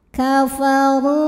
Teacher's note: huruf ro dibunyikan secara tafkhim sebab huruf rnya berbaris damah cara membacanya ditebalkan pangkal lidah kita angkat